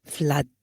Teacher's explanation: but in flood my lips are flat